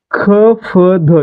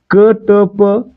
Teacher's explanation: महाप्राण व्यंजन कोणता आहे मूळ महाप्राण व्यंजन आहे ह आणि त्यासोबत ज्या वर्णाचा उच्चार करताना ह चा उच्चार होत म्हणजेच ह च प्राबल्य असत त्याला आपण काय म्हणतो महाप्राण म्हणतो